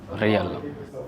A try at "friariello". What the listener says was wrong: No, without the O at the end. Friariello.